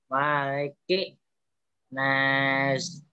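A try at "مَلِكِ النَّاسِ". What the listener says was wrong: Tasdidnya kurang jelas kamu. Malikin nas.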